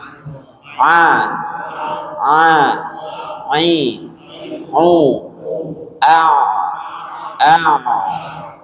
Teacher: Kalau kita rasa-rasa itu ada getaran walaupun sedikit ketika mengucapkan huruf ain.